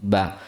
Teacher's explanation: Ba itu keluar dari kedua bibir, bertemunya antara dua bibir atas dan bawah dalam keadaan tertutup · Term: huruf ba